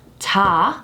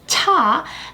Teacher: can also be defined in terms of voice onset time so the lax consonant has a shorter voice onset time the aspirated consonant has a longer